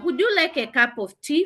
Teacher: that's a rising intonation. It's a yes or no answer question.